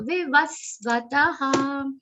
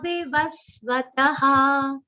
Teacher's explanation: First V is short. Then another second V is short. So the aghat is very prominent.